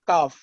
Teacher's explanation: اور دوسرا جو ہے کاف، زبان کا درمیانی حصہ جب تالو سے لگا کے ادا ہوگا تو کاف